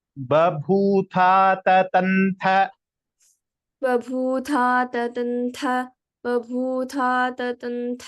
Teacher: तत्र ततन्थ अन्तिमथकारः महाप्राणः